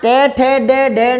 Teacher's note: अंदर से वो जीभ पलट के आती है, बोलते तो ये मुर्दा है, तो ये मूर्धन्य है, यहाँ से इनकी आवाज़ आती है।